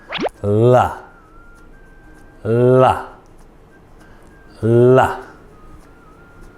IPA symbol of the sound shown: l